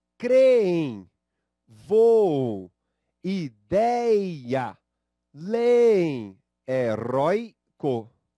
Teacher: Veja que a sílaba tônica, em todos os casos, é a penúltima. Penúltima. São palavras paroxítonas.